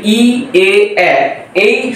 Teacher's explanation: জীবের অগ্রভাগ সামনের দিকে প্রসারিত হচ্ছে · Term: সম্মুখ স্বরধ্বনি